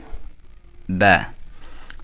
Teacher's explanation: দুই ঠোট থেকে উচ্চারণ হবে বা ওয়াও বা মিম এই তিনটা হারফ দুই ঠোট থেকে উচ্চারণ হবে